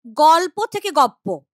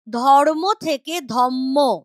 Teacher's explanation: পরাগত সমীভবন, সেখানে যেটা হয় ঠিক উল্টোটা, পরবর্তী ব্যঞ্জনের প্রভাবে পূর্ববর্তী ব্যঞ্জনটা পরিবর্তিত হয়